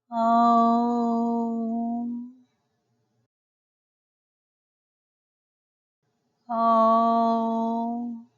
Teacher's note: vocal cords simultaneously 但是 ㄡ 的發音需要在最後加上一個 ㄨ 音 But the pronunciation of ㄡ requires a ㄨ sound at the end